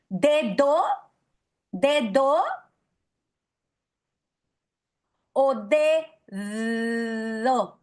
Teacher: Se ve ya no como oclusiva, sino como fricativa. Y miren, mi lengua, se mete entre los dientes. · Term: fricativa interdental